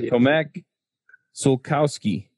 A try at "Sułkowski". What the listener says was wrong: It's all usually you just mispronounce the O. It's Sułkowski.